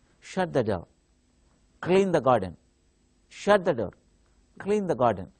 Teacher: here orders and commands we use falling tone